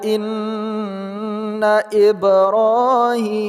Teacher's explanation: Ba sukun pada tengah kata qalqalah sughra